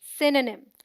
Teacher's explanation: SYN sounds like sin, as in win, and is the stressed syllable. The O sound is dropped. NYM sounds like nim, as in him.